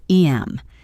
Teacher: The H in him is dropped. So it becomes em. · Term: elision